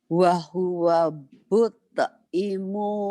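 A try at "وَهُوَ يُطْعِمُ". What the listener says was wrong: Bukan but, Bu. Bukan but. Titiknya 2. Yud, Bu. Bukan ba. Titiknya 2, Bu. Jadi but ya. Padahal yud.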